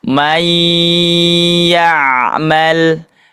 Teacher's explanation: Kalau ini bertemu dengan ya, maka cara pengucapannya tidak jelas tapi dimasukkan, diidgamkan. Tidak dibaca man, tapi may ya'mal.